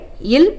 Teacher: மேல்வாயை நாக்கின் ஓரங்கள் தடித்து தடவுவதால் பிறக்கும் மெய்யெழுத்து இல் எனப்படும்.